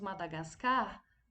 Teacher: a sílaba mais forte foi o car, foi a última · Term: oxítona